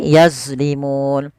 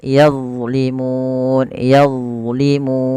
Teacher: Padahal huruf D bukan huruf mantul. Dia tidak boleh mantul.